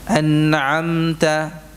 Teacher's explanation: Ada gunnahnya, ada dengan kadar yang sekedarnya, dengan kadar yang kurang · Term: gunnah naqisah